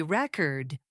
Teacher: when I say record with stress on the second syllable, I mean the verb.